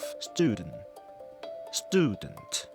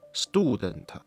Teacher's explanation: the American English ''OO'' is placed further forward